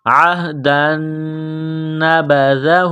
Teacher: دال کو باریک کرنا ہے زبان تھوڑی سی باہر نکالیں گے دال کو پڑھتے وقت · نون مشدد ہے غنہ کریں گے آواز ناک میں چھپائیں گے عہدا نبذہ دال کو باریک کرنا ہے زبان تھوڑی سی باہر